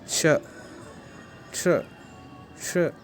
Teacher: जो पहला है श, उसका उच्चारण जो हम करते हैं वो हम तालु से करते हैं